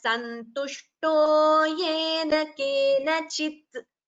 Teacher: It should not be prolonged to be heard as kena chitta. That is wrong. If it is kena chitta, that would be a hrasva swara. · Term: halanta